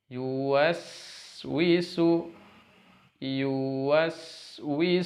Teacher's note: sin sukun sekali lagi, tidak boleh terputus tapi dialirkan nafas serta suaranya